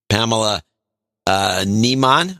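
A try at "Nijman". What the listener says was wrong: Nymon. In Dutch, we have the lange I and the korte I. So the long I is IJ, Nymon, and the korte I is IE. So it would be Niemon. If it was IE instead of IJ.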